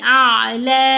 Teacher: اب یہاں حمزہ کو ہم نے آئین ساکن سے ملانا ہے، تو لا نہیں کرنا، جھٹکا نہیں دینا، لہر کی طرح آواز گلے میں جائے گی